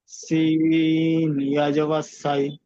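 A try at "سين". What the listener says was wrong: একই হয়ে গেল, এটা সিন এটা শিন, শিন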